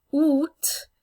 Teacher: the T is pronounced at the end